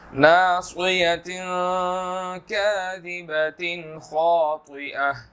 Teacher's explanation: خاطئہ خا موٹا ہے طا موٹا ہے، اس کو موٹا ادا کرنا ہے، باریک نہیں پڑھنا